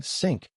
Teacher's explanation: The TH sound is absent from the student's L1. Mandarin has no th, so learners substitute the closest available L1 sound, typically s, producing sink for think.